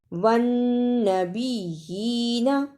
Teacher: وَالنَّبِيِّينَ، دونوں شد کو بھی ادا کرنا اور کھڑی زیر کو بھی صحیح ادا کرنا۔ شد کو ادا کرنے کا طریقہ، سختی کے ساتھ ذرا رک کر لیکن پڑھتے ہوئے درمیان میں آواز نہ ٹوٹے